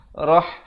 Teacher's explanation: Rah ha pedas di pertengahan kerongkong.